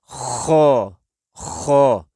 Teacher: یہ گلے کے شروع والے حصے سے جو یعنی منہ کی طرف ہے، یہ وہاں سے ادا ہوگا